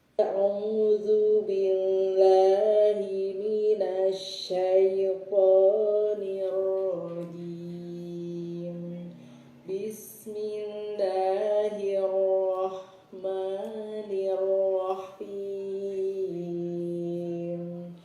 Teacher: Ya Bu, temponya terlalu lambat. Kemudian pitch-nya kurang tinggi, itu aja sih ya. Jadi terlalu rendah pitch-nya.